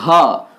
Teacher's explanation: आप घ को बोलिएगा तो कंठ से आपको उच्चारण होता है ये